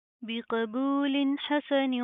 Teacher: قوف کو پروپر منہ کو پور کر کے پڑھیں گے، موٹا پڑھیں گے، حروف مستعلیہ میں سے، ٹھیک ہے۔